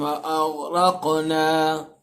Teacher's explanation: غین کو بھی منہ بھر کے پڑھیے گا کہ غین حروف مستعلیہ میں سے ہے، اور قاف بھی حروف مستعلیہ ہے، پلس قاف پر قلقلہ بھی ہو رہا ہے کیونکہ قاف حروف قلقلہ میں سے بھی ہے، تو قلقلہ بھی کرنا ہے، منہ بھر کے بھی پڑھنا ہے.